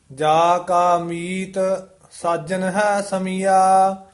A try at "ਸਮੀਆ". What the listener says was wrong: ਸਾਜਨ ਹੈ ਸਮੀਆ, ਇਹ ਸਮੀਆ ਹੀ ਉਚਾਰਨ ਕਰਨਾ, ਐੜੇ ਦੇ ਮਗਰ ਕੰਨੇ ਤੇ ਬਿੰਦੀ ਨਹੀਂ ਲਾਉਣੀ। ਸਮੀਆ ਆ ਨਹੀਂ ਬੋਲਣਾ।